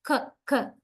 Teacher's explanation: We actually touch back of the tongue with the soft palate, k, k, and there we block the airstream.